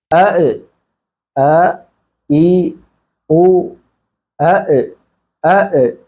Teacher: തൊണ്ടയുടെ താഴെ ഭാഗത്തു നിന്നാണ് ഹംസ് വരുന്നത് അതേ സ്ഥലത്തിൽ നിന്ന് വരുന്ന അക്ഷരമാണ് ഹ എന്നുള്ള അക്ഷരം ഹ എന്ന അക്ഷരം